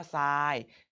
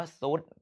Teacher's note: ทอทหารรเรือออกเป็นเสียงซโซ่ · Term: ควบกล้ำไม่แท้